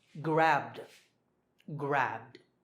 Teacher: Remember, b is voiced, so grabbed, grabbed.